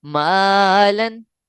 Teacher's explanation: اس کے بعد دیکھیں مالن، یہاں بھی الف کیوں باریک پڑھا گیا ہے؟ کیونکہ اس سے پہلے والا حرف باریک ہے